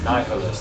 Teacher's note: that's a long I. So the syllable ends with a vowel, so you lengthen the vowel. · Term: Queen's tongue